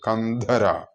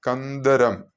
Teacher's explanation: മഹാപ്രാണൻ ഉപയോഗിച്ചിട്ടാണ് ഞാൻ പറഞ്ഞിട്ടിരിക്കുന്നത് ചൊല്ലി ഉച്ചരിച്ചിട്ടുള്ളത് അതായത് ഹ ചേർത്തുകൊണ്ട്